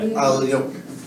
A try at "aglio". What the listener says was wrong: No, the tongue presses against the palate. Just try to press the tongue stronger against the palate.